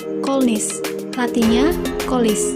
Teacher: fonem N diasimilasikan dengan fonem L yang mendahuluinya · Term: asimilasi progresif